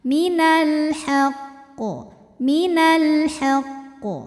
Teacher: enggak ada tasdid yang langsung mantul Minal haqq ya enggak begitu Jadi qofnya tasdidnya itu harus tetap terbawa Artinya kita Tahan dulu baru pantulannya tuh telat ya · Qalqalah kubra karena ada huruf Qalqalah yaitu Q yang matinya itu karena berhenti maka dibaca memantul dengan pantulan yang besar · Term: Qalqalah Akbar, qalqalah akbar